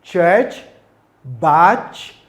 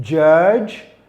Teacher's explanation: They are the sounds chi ch and the sound j. The two sound the first sound is voiceless while the other sound j is a voice sound.